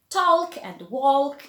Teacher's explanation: there is the rule of the L which is a dark L again it's not pronounced and the power before it just becomes longer like in the